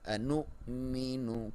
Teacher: انؤمن کو بھی کلیئر یاد رہے کہ ایک الف کی لمبائی جو ہے وہ 2 زبر کے برابر ہوتی ہے، تو اس کو آپ نے کو انو نہیں کرنا، ایک الف کے برابر لمبا نہیں کرنا، بلکہ صرف انو. اور حمزہ پہ جزم ہے تو آپ نے جھٹکے سے پڑھنا ہے